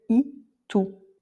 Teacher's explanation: la lettre E se prononce en fait I, un I fermé et très court